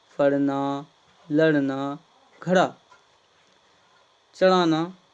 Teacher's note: द्विव्यंजन को जिह्वा के स्पर्श से मुंह बाहर तेजी से फेंक देते, इसलिए इसको फेंका हुआ व्यंजन भी कहते हैं।